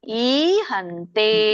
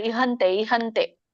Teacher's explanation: ಇಹಂತೆ ಅಲ್ಲ ಈಹಂತೆ ದೀರ್ಘ ಇದೆ ಕೆಲವೊಬ್ಬರು ಹೇಗೆ ಹೇಳ್ತಾರೆ ಇಹಂತೆ ಇಹಂತೆ ಅಲ್ಲ ಈನು ಒತ್ತಿ ಹೇಳಬೇಕು ದೀರ್ಘನು ಒತ್ತಿ ಹೇಳಬೇಕು